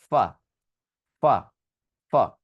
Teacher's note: আমি উপরের দাঁত আর নিচের ঠোঁটকে টাচ করাবো · ফাস্ট সাউন্ডটা ক্রিয়েট করতে হবে উপরের দাঁত এবং নিচের ঠোঁট দিয়ে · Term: ফা সাউন্ড